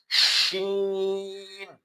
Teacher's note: اس میں آواز منہ کے اندر پھیل جاتی ہے